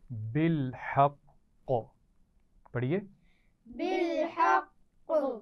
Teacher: قاف پر تشدید ہے اور وقف کرتے ہوئے ہم اس پر ساکن کریں گے لیکن شد کی سختی باقی رہے گی، جس کی وجہ سے قلقلہ ہوگا تھوڑا سختی کے ساتھ